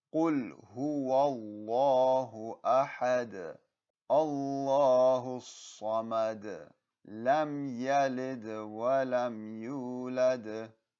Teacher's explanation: at the end of all these ayahs, you will have a Qalqalah sound